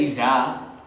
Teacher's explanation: If you say Iza, right? The tongue doesn't come through.